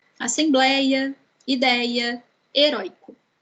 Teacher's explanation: todas essas 3 palavras têm a penúltima sílaba tônica. Isso quer dizer que são paroxítonas.